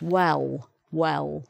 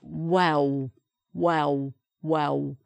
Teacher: the l sound is changed to a wa, wa, wa, wa, like that, like the letter w